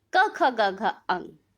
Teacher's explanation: सबसे पिछला हिस्सा जीभ का तालु के पिछले हिस्से के साथ जो कि कंठ के पास होता है, स्पर्श करता है